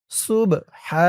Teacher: হা আওয়াজটা গলার ভিতর থেকে বের করতে হবে